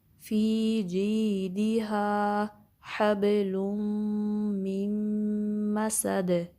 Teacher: اور دال پہ کلکلا ہوگا سٹاپ کرنے کی صورت میں.